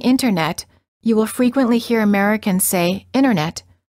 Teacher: the T after an N or an n Sound is often silent